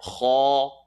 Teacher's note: Kha is the third part of the throat, heavy letter